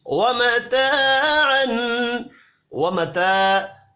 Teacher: الف مدہ ہے، اس کو بھی ایک الف کے برابر کھینچ کر پڑھیں گے۔